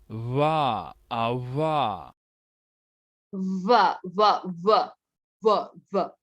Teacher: Bilabial होठों पे जो प्रोनाउंस हो रहा है, दोनों होठों का इस्तेमाल कर रहे हैं। लेबियोडेंटल नीचे के होंठ, ऊपर के दांत।